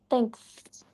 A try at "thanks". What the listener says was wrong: Muitas vezes nós começamos falando thanks, sem retirar a língua. Mas nós temos que retirar a língua para poder pronunciar o S de sapo no final.